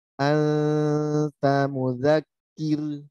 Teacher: Anta, jangan tapi anta, tetap senyum. Anta, ujung lidahnya siap-siap di pangkal gigi seri atas huruf ta. Jangan menyentuh, hanya siap-siap aja. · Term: ikhfa